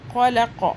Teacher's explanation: خو کو موٹا کریں گے، قوف کو بھی موٹا کریں گے۔ قوف پڑھتے ہوئے آپ نے زبان کا سب سے پچھلا حلق والا وہاں سے سکن آپ کی ٹچ ہونی چاہیے، پھر یہ قوف ادا ہوگا۔